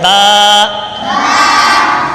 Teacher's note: बा दोनों होठों के तरी वाले हिस्से से अदा होता है।